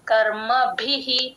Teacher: భి కి మహాప్రాణం ఉంది అక్కడ విసర్గ హి అవుతుందండి